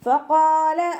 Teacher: നമ്മുടെ മേലെ മുൻപല്ലിൻ്റെ അറ്റം താഴെ ചുണ്ടിൻ്റെ ഉൾവശത്ത് നനഞ്ഞ ഭാഗത്ത് വെച്ചിട്ട് ഉച്ചരിക്കുക കേട്ടോ. ഖാഫ് ഇസ്തിഅലാൻ്റെ ലെറ്ററാണ്, തഫ്ഹീം ചെയ്യുക.